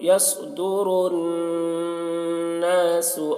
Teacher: نون میں مشدد ہے تو غنہ کر رہے ہیں